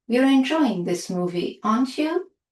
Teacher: a rising intonation, we are asking a real question and expect an answer.